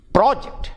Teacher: while using it as a noun we put the stress on the first syllable